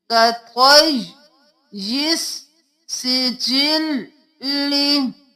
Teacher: दो बार या को, सीन को, लाम को दो बार अदा करना है